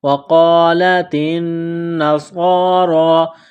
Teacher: قاف کو موٹا کرنا ہے، تا کو باریک کرنا ہے۔ وقالت النصارى، نون مشدد ہے، غنہ کریں گے، آواز ناک میں چھپائیں گے۔